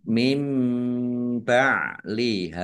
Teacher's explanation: nun sukun bertemu dengan huruf ba, bacaan iklab, dibaca membalik, nunnya dibaca mim dulu. Mim ba liha ditandai ada mim kecil berdiri.